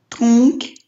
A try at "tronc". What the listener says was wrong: Только К не читаем. После носовых звуков... Вообще К читается на конце слова, да, вот это С, но после носовых нет.